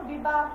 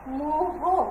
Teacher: বিশেষ্য শব্দের শেষে হ থাকলে অন্ত অ ওরূপে উচ্চারিত হয়